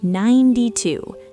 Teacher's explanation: Again, put all the energy on 9. The T is soft and it flows right into 2.